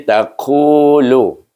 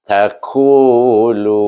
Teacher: Ta satu, qaf ni huruf istilah ku, terangkat pangkal lidah itu. Tentukan terangkat pangkal lidah. Kalau tidak terjadi ku, dia jadi kaf itu, huruf kaf ini.